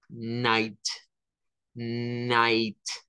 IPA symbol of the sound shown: aɪ